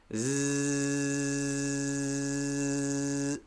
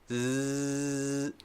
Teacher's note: it's also a very long sound you should be able to do it softly for quite a long time even though your tongue is pushed up against your teeth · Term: z sound